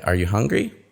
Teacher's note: you can see the stress rises for the yes-no, and it doesn't fall.